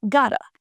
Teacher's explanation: in everyday speech, we don't pronounce the t in got to clearly. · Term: flap T